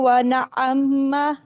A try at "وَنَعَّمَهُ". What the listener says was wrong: میم پہ شد نہیں لگانی, عین کی ادا کریں.